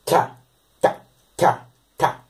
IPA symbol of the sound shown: cʰ